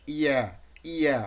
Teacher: দেন যে ইয়া লেটার, ইয়া লেটারটার মাখরাজ হচ্ছে জিহ্বার মধ্যখান তার বরাবর ওপরের তালুর সঙ্গে লাগিয়ে, জিহ্বার মধ্যখান, আপনার মিডিল পয়েন্টটা, জিহ্বার যে মিডিল পয়েন্টটা তার বরাবর ওপরের তালুর সঙ্গে লাগিয়ে ইয়া উচ্চারিত হয়। ইয়া, ইয়া, যখন জিহ্বার গোড়া চলে যাচ্ছে ওপরে, এটা তখন আর একটু আমরা যদি ক্লিয়ার করতে পারি, দেখেন এই যে জিহ্বার ইয়া দুই সাইডটা, এই যে দুই সাইডটা, আর এই আগাটা নিচের দিকে থাকে, আর দুই সাইডটা একটু উঁচু করে ইয়া ইয়া।